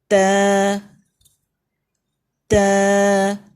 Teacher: زبان کی نوک behind the upper teeth جب وہاں لگے گی تو تب تا ادا ہوگا